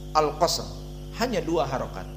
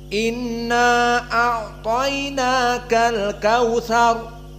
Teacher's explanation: Maka qiraah Al-Kisai, qiraah Abi Amr, baik dari riwayat Ad-Duri ataupun As-Susi, maka al-qasr, hanya 2 harokat.